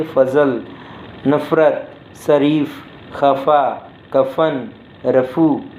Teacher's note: इसके उच्चारण में होंठ एक दूसरे को पूरी तरह स्पष्ट करते हैं, बल्कि कुछ इस तरह से हल्का सा स्पष्ट करते हैं कि हवा घर्षण खाती हुई बाहर निकल जाती है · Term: ओष्ठी ध्वनि